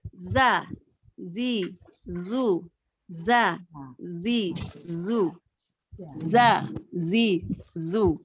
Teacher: Nah kalau zai yang agak panjang, ro ada titiknya seperti ro ada titiknya. Ujung lidahnya taruh atau tempel di ujung gigi yang bawah.